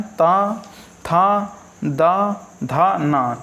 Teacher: ता वर्ग और ला और सा जो रहते हैं वो दंत से बोले जाते हैं